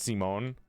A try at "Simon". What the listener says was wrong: Simon. No, it's like you said it wrong. You say Simon. But like in French, it's Simon. No, Simon. If you do Simone, then it's feminine. It's a woman's name.